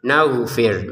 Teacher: huruf ghin, naghfir menjadi huruf tenggorokan bagian atas